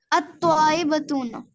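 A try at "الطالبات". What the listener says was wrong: ना ना बतूना तो बिल्कुल नहीं होगा। जी जी आत साउंड होती है यहाँ पर, तो अत-तालिबातु, अत-तालिबातु।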